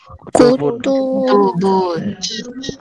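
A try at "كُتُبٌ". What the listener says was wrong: Nggak panjang. Kutubun. Begitu langsung. Kutubun. Bukan kutubun. Bukan gitu, tapi kutubun.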